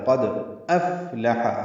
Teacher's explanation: حمزہ کی آواز واضح نکالنی اور فا کی آواز بھی واضح طور پر آنی چاہیے، اس میں ہمس ہے یعنی سانس کی آواز جاری رہتی ہے ، اس میں افلح، لام اور ہا جلدی پڑھیں گے، ہا · قاف پر دال ساکن پہ قلقلہ ہے ۔ قد افلح، حمزہ کی آواز واضح نکالنی اور فا کی